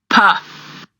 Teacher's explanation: It's going to block the air, and look at the vocal cords. It does not move.